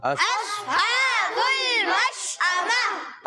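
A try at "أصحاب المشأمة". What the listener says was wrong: अगर हम अस करेंगे तो ये सौद सीन से बदल जाएगा। हमने करना है औस, मोटा करे औस। अस्हाबुल मशअमा।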